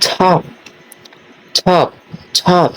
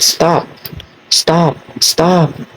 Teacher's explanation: the t is aspirated a small a small puff of air is released when you say the word top top top see a small puff of air and it's unaspirated